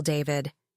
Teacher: the stress hits that first syllable hard